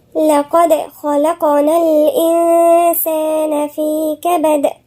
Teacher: لقد هنا في قلقلة عند الدال. خلق، خاء مفخمة، اللام مرققة والقاف مفخمة، وفي قلقلة.